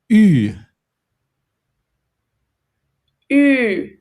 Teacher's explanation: you basically make your mouth into the shape of a fish. Like you make it very narrow and you just like, not like U, where it's white, but Ü.